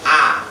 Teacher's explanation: Huruf alif itu insya Allah hampir semuanya bisa, tidak ada yang sulit karena sama dengan huruf A. Cuma lebih mangap.